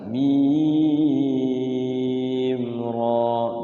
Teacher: jadi ro-nya jangan terlalu panjang-panjang. Jadi ro langsung aja. Mim ra, 2 harokat.